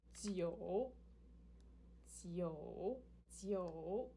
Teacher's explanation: this is the third tone, descending rising